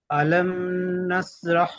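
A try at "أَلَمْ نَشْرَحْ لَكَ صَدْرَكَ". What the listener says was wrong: না, আলাম বলে এখানে গুণনা করা যাবে না, আলাম মিমকে তাড়াতাড়ি পড়তে হবে। আলাম নাশরাহ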